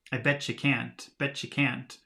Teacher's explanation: And these long consonant sounds, like you, tend to become short. And so instead of saying you, it becomes ya, betcha